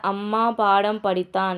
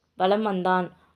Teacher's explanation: நம்ம படிக்கிறப்பவே நமக்கு தெரியுது இல்ல மகர மெய்யெழுத்து அடுத்து வகர எழுத்து வர்றதால மகர மெய்யானது என்ன பண்ணுது தனக்குரிய அரை மாத்திரையிலிருந்து குறைஞ்சு கால் மாத்திரை அளவுதான் ஒலிக்குது